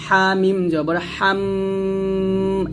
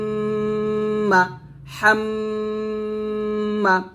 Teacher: আমরা দুই টু মিল করে ধরে রাখবো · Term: ওয়াজিব গুন্না